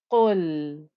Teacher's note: I had a qaf here, thick heavy qaf with a damma, and I'm joining it to the lam.